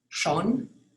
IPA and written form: 'ʃoːn (Schon)